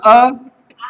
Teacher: छोटा अ और बड़ा अ कंठ से होता है